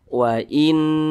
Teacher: Cara bacanya itu digunnahkan atau didengungkan. Nah, suaranya itu kita tahan, kita panjangkan 2 hingga 3 harokat. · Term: gunnah musyaddadah